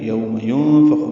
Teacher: یوم ينفخ میں نون ساکن و فان کی وجہ سے اخفا ہے، خا پر ہے.